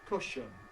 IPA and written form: ˈkʊʃən (cushion)